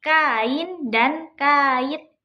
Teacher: Pada contoh-contoh tersebut huruf vokalnya memang berdekatan, tetapi tetap berada pada suku kata yang berbeda sehingga disebut deret vokal.